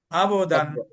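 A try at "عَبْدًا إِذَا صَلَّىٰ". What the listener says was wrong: আবে আবেদান। কলকলা কম হয়েছিল, আর দ্বিতীয়টা হচ্ছিল সল্ল হয়েছিল, এখানে আল্লাহ শব্দ আসে নাই, এখানে শুধু লাম খারা জবর আসছে, ঠিক আছে? এটা মোটা হবে না, স্বাভাবিক হবে।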